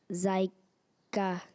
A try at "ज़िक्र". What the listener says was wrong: नहीं, ये जायका बिल्कुल भी नहीं बना। जिक्रा भी नहीं बना। आर के बाद ए थोड़ी है। ZIK R। जिक्र नहीं, जिक्र।